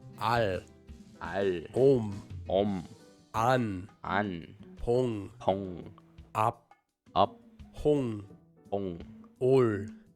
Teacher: at the start of a syllable, this consonant has an empty sound, and at the end of a syllable, it has the sound of ng